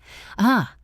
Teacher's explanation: The schwa is the most common sound in the English language and it is the key to effortless speech. It sounds like a tiny relaxed uh it is the sound you make when someone punches you in the stomach lightly.